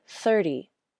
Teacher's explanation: my tongue tip comes out for the th then quickly pulls back for the ER then the tip comes up to the roof of my mouth for the flap and my lips spread for the e